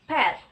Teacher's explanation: in English, we have bilabial stop consonant p in the word pet